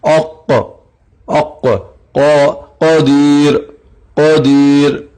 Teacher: دراصل اس کو عام زبان میں کہا جائے تو پرجیب جو ہم کہتے ہیں، چھوٹی جیب جو ہے ہماری جیب کے نیچے والا حصہ، تو اس پرجیب کے نیچے سے زبان حرف قاف ادا ہوگا، اوق اوق۔ یاد رہے جس وقت قاف ادا ہوگا تو آواز ٹکرائے گی اور آواز موٹی بھی تفخیم بھی ہوگی۔ اوق اوق، قدیر قدیر، اس طرح سے۔